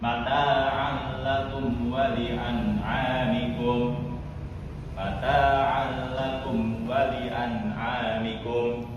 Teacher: Contoh selanjutnya, mata'al lakum wa li'an'amikum. Di sini huruf ain berharokat fathah ten yang bertemu dengan huruf lam. Maka cara membacanya yaitu dengan cara memasukkannya ke dalam huruf lam dengan cara tidak mendengung